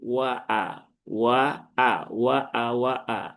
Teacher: jadi hamzahnya harus jelas ya. Jangan sampai terayun.